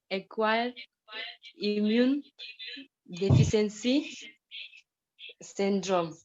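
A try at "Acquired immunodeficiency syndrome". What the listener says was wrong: Acquired immuno, not immune. Acquired immuno deficiency syndrome.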